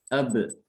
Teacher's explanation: Kolkolah di sini berarti dia itu setelah bibirnya merapat ya, bibirnya menutup langsung dilepas secara refleks. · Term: dikolkolahkan